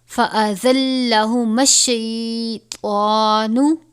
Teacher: اب یہاں پر ذا کو سختی سے پڑھیں گے اور طا کو پر کر کے پڑھیں گے، یعنی طا حرف مستعلیہ میں سے ہے، اس کو پر پڑھا جاتا ہے